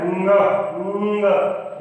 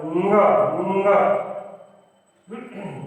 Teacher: इसका सही उच्चारण है ङ। नाक से बोला जाता है